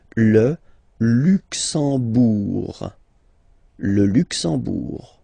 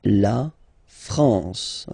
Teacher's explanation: You don't pronounce the M at all, it's this nasal en